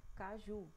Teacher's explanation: a sílaba ca, a gente percebe que a gente fala ela mais rápido um pouquinho do que ju. Ju já demora mais, ó. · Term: oxítona